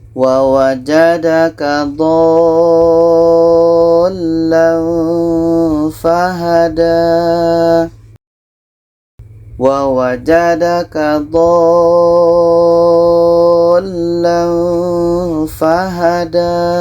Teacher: dha ini kita panjangkan 6 harakat baru masuk ke huruf yang ada tasydidnya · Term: mat lazim kilmi mutsaqqal